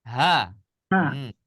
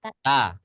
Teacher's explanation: dilanjutkan bacaannya maka dia tetap dibaca ta ya tetap dibaca ta sedangkan kalau waqaf menghentikan bacaan tidak dibaca ta melainkan dibaca ha